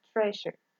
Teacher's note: that is voice lingual palatal fricative